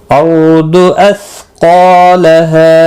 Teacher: अर्दु रो साकिन से पहले ज़बर है, इसलिए पुर पढ़ा जाएगा। रो साकिन, दाद मुस्तालिया है।